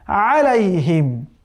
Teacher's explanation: আলাইহিমকে অনেকে পড়ে আলাইহিম, আলাইহিম পড়া যাবে না। আইনের উচ্চারণ এই কণ্ঠনালীর যে মধ্যভাগ আছে সেখান থেকে উচ্চারণ করতে হবে